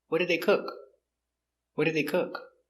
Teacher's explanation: so intonation goes down at the end because it's an information question